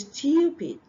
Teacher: So you have the yes sound after the T. Hidden yes sound.